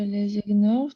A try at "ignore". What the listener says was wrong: Non, GN. У тебя нет звука.